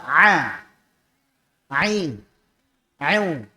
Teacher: makhrajnya Ain di mana Tengah tenggorokan